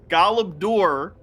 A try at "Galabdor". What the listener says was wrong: have to roll your R a bit. That doesn't sound right at all.